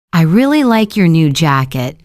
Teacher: For example, I really like your new jacket. We stress really like and jacket. We don't stress I, your, or new.